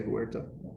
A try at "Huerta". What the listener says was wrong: It's just where. don't- Yeah, you don't pronounce the H. Like the word where. You roll your R obviously better than that.